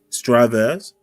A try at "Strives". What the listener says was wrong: The E is silent. The E is silent.